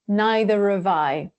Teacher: I can also use a linking R sound to glide between the 2 vowel sounds more easily.